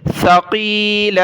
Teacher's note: یہ سا ہے، اس پر سیٹی کی آواز نہیں آنی چاہیے، سا پر ہم زبان نکالتے ہیں